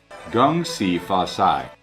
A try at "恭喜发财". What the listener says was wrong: Just the C, like 呲 in cats, 呲呲呲, which needs the tongue to be more flattened.